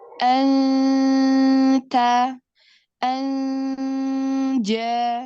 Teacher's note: Nah, lalu selainnya, misal bertemu dengan huruf jim, itu nun sukun atau tanwinnya dibaca samar. Tidak ke eng, tidak ke en. Jadi kalau bahasa ustazah saya tuh lidah itu ngambang.